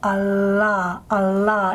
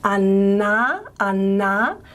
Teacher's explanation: If you might remember from English, we've got a plain alveolar lateral la, okay, and what happens is the tongue tip is in the alveolar region and the sides of the tongue are lowered, okay. Allah, you can actually see that in my mouth, Allah, Allah.